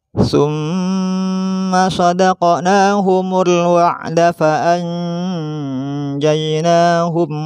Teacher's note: memasukkan suara nun mati pada jim, huruf setelahnya dengan disertai dengung